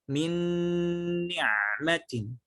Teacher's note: Di sini kita menahan gunnah sekitar tempo 4 ketukan